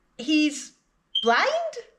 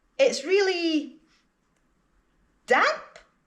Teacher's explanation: you can use rising intonation on the word that you're not sure about, thereby turning it into a question